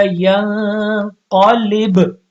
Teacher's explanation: اب یہاں پہ پھر با کے اوپر کیا آ جائے گی جزم اور سکون آ جائے گا تو با ساکن ہو جائے گا. تو ساکن ہوتے ساتھ اس پر قلقلہ آ جائے گا ینقلب. لیکن جب آیت یہاں پہ ختم نہیں ہو رہی دوبارہ پیچھے سے ملا کے پڑھیں گے تو پھر قلقلہ پھر ختم ہو جائے گا.